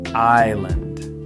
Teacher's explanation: you'd expect island with the S making a sound, but it's just island. The S is completely silent. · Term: the silent S